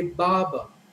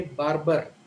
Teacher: the r in the first syllable and the r in the second syllable both are silent